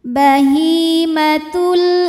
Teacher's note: alif lam menghadapi huruf qamariah yaitu Hamzah maka lam sukun ini kita bunyikan dengan jelas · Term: alif lam qamariah